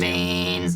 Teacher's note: It's a lot of vocal fry.